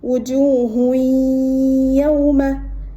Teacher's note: The sound of dhammatain will merge into ya with a ghunna. So wujuhun yawma.